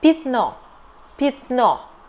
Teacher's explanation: We write пятно but we prononciate [питно], [peetno], because Я [ya] is unstressed here.